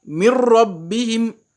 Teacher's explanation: Quand je dis mir rabbihim, je passe du mim directement au ra sans chanter, sans faire de gunna. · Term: idgham